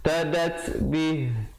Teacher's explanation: ada hamas, ada angin di situ